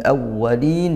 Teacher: al bertemu huruf hamzah, huruf qamariyah, dibaca jelas lam sukunnya, lamnya dibaca sukun ya, jelas. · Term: izhar qamariyah